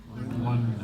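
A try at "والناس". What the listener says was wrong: Wan-nas, right? Did you pronounce this lam? Why are you skipping that lamb?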